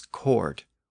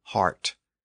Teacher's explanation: lots of words in Latin and Greek that have a k sound where English has an H sound